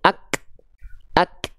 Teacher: tertunaikan dulu sifat syiddahnya ak baru keluar percikan nafasnya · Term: huruf Kaf